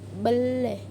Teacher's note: Dalam bahasa Bugis dapat direalisasikan sebagai bunyi E yang tengah dan netral seperti pada kata bele yang berarti beli.